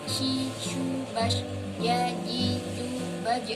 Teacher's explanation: Apiko itu di ujung lidah, palatal langit-langit keras. Ujung lidah bekerja sama dengan langit-langit keras untuk menghambat udara yang datang dari paru-paru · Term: konsonan apiko palatal